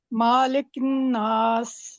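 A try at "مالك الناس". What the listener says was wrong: آپ دیکھیں میم کے اوپر کیا ہے، ذرا غور کریں، تو زبر کو کتنا کھینچنا ہے ہم نے؟ لمبا کرنا ہے؟ نہیں، خالی زبر ہے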